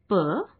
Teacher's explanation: इन वर्णों का उच्चारण दोनों होठों को सटाकर किया जाता है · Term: ओष्ठ्य